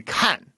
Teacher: They just sort of get to the ka, like it should be kan, right? But they start with like the ka, right, up high, and then they just sort of keep it there kan, right? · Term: fourth tone